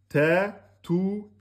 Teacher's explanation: le ta, c'est une lettre amincie. Ce n'est pas une lettre emphatique.